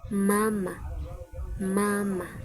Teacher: Ang pailong o nisal. Dito naman hinaharangan natin ung hangin sa bibig. Pero pinapalabas natin sa ilong.